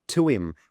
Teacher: we drop the H sound and we replace it with a W